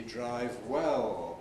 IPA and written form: ˈdraɪv ˈwel (drive well)